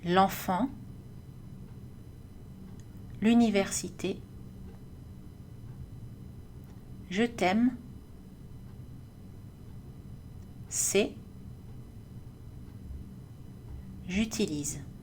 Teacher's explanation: Il ne faut pas faire de pause quand vous lisez une syllabe avec une apostrophe. Il faut fusionner les mots pour qu'ils soient combinés en une seule syllabe. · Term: L'élision